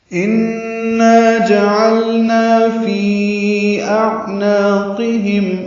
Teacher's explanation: نون مشدد پہ غنہ ہے، غنہ واجب ہوتا ہے، آواز ناک کے باسے میں لے جا کر 2 حرکات تک ٹھہراتے ہیں.